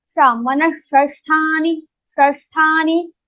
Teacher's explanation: That sha will be pronounced from your murdha.